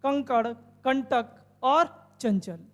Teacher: तो कहेंगे नाक से होता है। अनुस्वार वर्णों का उच्चारण करते समय नाक से अधिक हवा निकलेगी